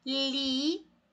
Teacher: A sílaba tônica é a última, então essa palavra é oxítona